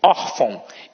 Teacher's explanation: a sílaba tônica está na penúltima sílaba. Ou seja, eu tenho uma paroxítona.